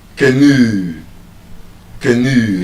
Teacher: There's a long ooh sound at the end.